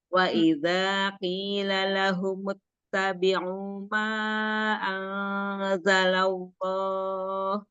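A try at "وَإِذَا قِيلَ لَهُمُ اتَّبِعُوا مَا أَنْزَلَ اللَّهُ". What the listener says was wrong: nah, tafhimnya kurang masih ya, Tafhim di lafaz jalallah. Jalalallahnya kurang. Kan itu harusnya tafhim.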